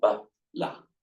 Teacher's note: there are two light syllables. You've got a short vowel followed by end of syllable, ba, la, short vowel, short vowel.